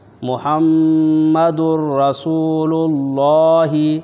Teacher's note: یہاں ادغام تام ہو رہا ہے، یہاں غنہ نہیں ہو رہا ہے، کیونکہ تنوین کے بعد حروف یرملون میں سے را آ رہا ہے